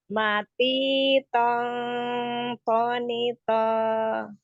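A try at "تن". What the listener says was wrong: Kerasa ya ini nih Umi rasain. Kalau dia terakhirnya tuh tidak terdengar kayak bunyi nunnya itu, kerasa ujung lidahnya Umi tidak nyentuh ke pangkal. Ya nggak? Nyentuh nggak?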